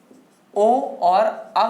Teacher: कंठ और ओठ मिलकर के हमारा क्या बना रहा है, ये ओ और अव बना रहा है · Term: कंठोष्ठ